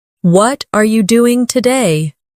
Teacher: the stress usually falls on what and doing.